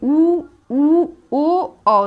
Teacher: तो एकदम गोल सा होठ हो जा रहे हैं हम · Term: वृत्ताकार